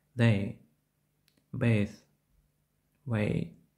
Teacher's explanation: Вимова починається з голосного звуку «e», що переходить в «i». Однак необхідно слідкувати, щоб утворений звук не був повністю тотожний до українського голосного «e» та приголосного «i». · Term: Дифтонг